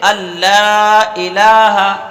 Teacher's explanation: اللہ، اور لام پر زبر کے ساتھ الف بھی ہے تو لام کو ایک الف کے برابر کھینچ کر پڑھیں گے